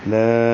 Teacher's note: لا 4 حرکات لمبا کریں گے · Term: مد منفصل